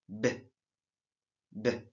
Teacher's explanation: Quand vous prononcez B, vous allez remarquer qu'au niveau de votre gorge ou de vos cordes vocales, il y a une vibration. C'est ça qu'on appelle consonne sonore.